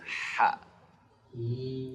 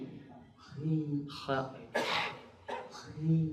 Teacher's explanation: Jangan ada getaran seperti kha ya. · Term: Ha tipis